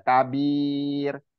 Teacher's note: Jadi jangan disempurnakan lun gitu ya. Kabir, ro-nya jangan terlalu ditebalkan kalau dia huruf sebelumnya itu berharokat kasroh. Jadi tipis aja.